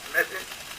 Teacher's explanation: Notice how he still says message with that E, which is very closed